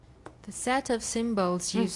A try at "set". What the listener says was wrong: Set, not sat. Set.